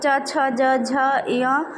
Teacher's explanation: च छ ज झ य ये तालू से बोले जाते हैं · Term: च वर्ग